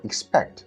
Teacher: to the falling tone everything all right in the word expect the stress is on the second e okay stress is fixed it doesn't change